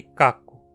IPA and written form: kakʊ (caco)